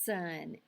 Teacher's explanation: it's a continuant and it you can make make that sound as long as you have air in your lungs